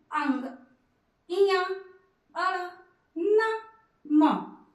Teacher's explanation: जब भी बोलेंगे तो इसमें हमें नासिका का सहारा लेना पड़ता है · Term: पंचमाक्षर